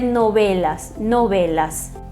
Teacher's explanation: E temos o novelas, que nunca vai ser novela, porque não se fala o E aberto, né? Alguns países podem falar um pouquinho mais abertinho, mas nunca aberto como no português. E o V, na maioria dos países, tem um som mais puxado para um B. · É um intermediário entre V e B, os lábios semi-abertos, né, não muito pressionados, e vai se dizer novelas, novelas.